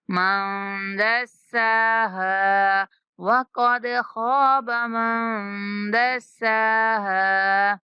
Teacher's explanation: دسا سین کو سختی سے پڑھتے ہوئے 1 سیکنڈ تک لمبا کریں گے اور ہا کو بھی 1 سیکنڈ تک لمبا کریں گے، ہا کے بعد الف مدہ ہے۔